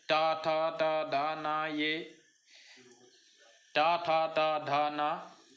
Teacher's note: ये दांतों से स्पर्श होते हैं